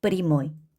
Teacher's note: 야라고 되어 있지만 우리는 프리모이 이렇게 야를 야로 읽지 않고 강세 앞에 야는 이로 읽습니다.